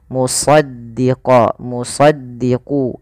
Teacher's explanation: itu apa Istia itu pangkal lidahnya terangkat kemudian idbaak idbak itu lidah kita lebih melekat dengan langit-langit atas maka dia agak ditebalkan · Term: isti'la